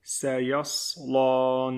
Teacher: The first S sound is thinner than the second S sound. This is seen, this is sawed.